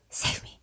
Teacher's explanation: You can see his lips moving. You can hear some breathiness. It kind of sounds like save me, but you don't really hear it.